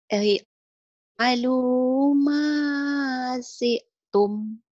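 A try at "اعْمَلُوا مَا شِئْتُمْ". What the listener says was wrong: I'malu ma syi'tum. I-nya jelas, kemudian ke ain. I'malu ma syi'tum. Si atau fasi? I'malu ma syi'tum. Kurang syanya ya, ngutang.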